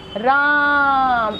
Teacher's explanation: जैसे हमने कहा राम, ऐसा चिन्ह लगाते हैं जब हम किसी स्वर को खींचते हैं, तो इस तरह के चिन्ह का प्रयोग करते हैं। राम, तो आ खींचा गया, तो अब यहाँ पे आ की जो मात्रा है, जो समय लग रहा है, वो बहुत ज़्यादा हो गया ना, तो इसको हम प्लुत स्वर में रखते हैं।